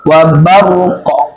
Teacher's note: Qoknya tetap ada pantulannya, ra-nya ada sukun, qafnya disukun. Wa barq, bukan babarq, bukan raq.